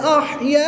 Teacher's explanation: الف مدہ کے بعد حمزہ اسی کلمے میں ہے تو یہاں پر مد متصل ہوگی، 3 سے 5 الف تک کھینچ کر پڑھیں گے۔